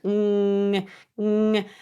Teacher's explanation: So this sound actually exits through your nose. That messes with the pressure of the whole system. · The middle part of your tongue really is closing the vocal tract off. Ng. And redirecting all the sound through your nose. So this sound actually exits through your nose.